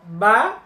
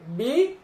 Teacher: জবরের উচ্চারণ হালকা মুখে ফাঁকা হবে উপরের দিকে, জেরের উচ্চারণ হালকা নিচের দিকে চাপ দিতে হবে একটু শক্ত করে।